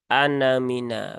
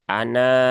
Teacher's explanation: Nah, di situ ada tanda sifir ya, sifir mustatil ya. Jadi kalau dia di wasol ya, di wasol maka dia dibacanya pendek, anamina begitu kan. Tapi kalau dia wakof, maka dia dibaca panjang, ana ya seperti itu.